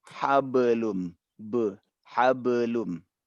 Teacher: Hablum ini adalah qalqalah yang paling kecil derajatnya. Jadi jangan dibaca hablum, tapi bacalah dia dengan hablum, hablum.